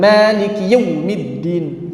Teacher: Yaumiddin terlalu cepat masuknya sehingga linnya hilang. Sifat lembutnya malah hilang itu ya kecepatan itu kecepatan ya sehingga linnya malah hilang.